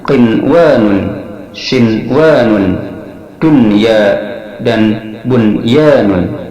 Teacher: nun dibaca sebagai izhar dan tidak digabungkan ke dalam huruf idgham ya dan wau karena keduanya berada dalam kata yang sama.